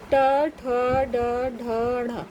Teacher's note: जब आप बोलेंगे ट से लेके अणा तक तो ये मूर्धा से आवाज आती है